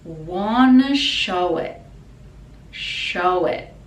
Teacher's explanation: show it again the t is silent